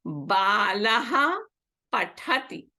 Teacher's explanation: So here the Visarga is followed by a hard consonant. Pa, ha. Hard. So nothing happens. It remains as it is.